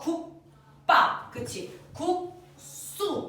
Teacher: 뒤에 오는 안 울림 예사소리 역시 된 소리로 발음이 된다.